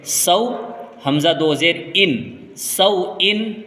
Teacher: سے پہلے اگر زبر ہوگا تو وہ واولین کہلاتی ہے، اور واولین کو جلدی پڑھتے ہیں، تو یہاں پر واولین کو جلدی پڑھیں گے